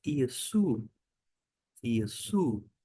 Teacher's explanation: Note que termina Iesu, porque aqui há o ditongo, o som de U. Toda vez que aparecer o ômicron com Y, som de U.